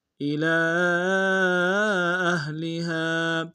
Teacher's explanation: الی اہلہا، الی اہلہا، الی میں حمزہ کو نون سے ادا کریں گے، لام کے اوپر کھڑا زبر ہے اور مد منفصل ہے، چھوٹا مد ہے، کم سے کم 2 الف انداز میں کھینچیں گے، اور حمزہ کو ہا کے سامنے لائیں گے، اور اگلا جو آخری میں ہا ہے اس کے ساتھ الف مد ایک انداز میں کھینچیں گے۔